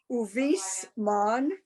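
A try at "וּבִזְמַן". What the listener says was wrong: Okay, remember that that's like the Z and zoo. Uviz.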